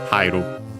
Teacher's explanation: I noticed that in this case, yeah, the accent moves on the ha so not on the second to last more, but on the third to last, because high AE is considered diphthong, and so that's why.